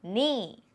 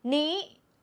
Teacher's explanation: falling tone knee and high tone knee different